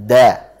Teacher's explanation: Makhrajnya sama, sehingga harus diperhatikan. Makhrajnya adalah di ujung lidah menempel dengan pangkal gigi seri atas. Jadi kena gigi seri, gitu antum merasakan, dirasakan ya, lidahnya ditempelkan ke pangkal gigi seri atas. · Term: huruf dal